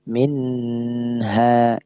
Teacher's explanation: jangan lama-lama ya jangan didengungkan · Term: nun sukun